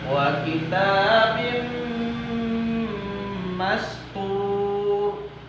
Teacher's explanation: Ada tanwin disambut huruf mim, kemudian mimnya bertasdid. Nah, kita tahan suara kita di situ 4 ketukan ya.